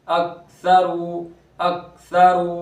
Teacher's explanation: یہ ڈنڈی والا کاف حرف قلقلہ میں نہیں ہے تو کاف کی آواز لوٹتی ہوئی نہیں آئے گی. جس طرح حرف قلقلہ کی آواز لوٹتی ہوئی آتی ہے، یہ آواز لوٹتی ہوئی نہیں آئے گی.